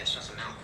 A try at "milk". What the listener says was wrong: No, you're saying it wrong. You're saying MALK. Like it's a disease. I'm saying it the way everyone ought to say it. Milk. M-I-L-K. Say milkshake. Okay, now say milk.